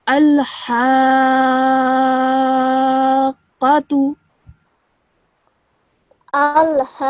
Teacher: Okay, now over here you have a ha with a fatha followed by an alif with a mad kabir on it. So you say that for around 4 seconds. You stretch this sound for 4 seconds.